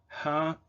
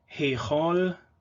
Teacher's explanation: It has been a voiceless glottal fricative